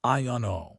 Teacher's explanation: You basically drop the D and the T completely.